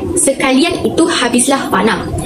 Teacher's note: Dalam perkataan sekalian terdapat gandingan vokal I dan A yang berada bersebelahan tetapi pada dua suku kata yang berbeza, iaitu sekalian.